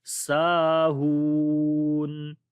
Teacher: سین کو لمبا کریں گے، الف مدہ ہے